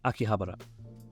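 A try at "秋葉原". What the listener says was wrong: Cringing at his pronunciation while I rewatch the video. In Japan, you don't put an accent on a certain syllable, so give them all the same weight.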